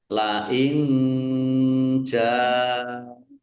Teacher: Nun sukun bertemu dengan huruf jim. Bacaan ikhfa dibaca samar-samar.